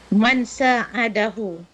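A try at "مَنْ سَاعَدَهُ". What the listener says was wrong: man sa'adahu. Betul.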